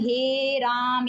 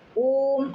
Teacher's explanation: जब किसी को दूर से पुकारते हैं तो अंतिम स्वर लंबा कर देते हैं ना खींच कर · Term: प्लुत स्वर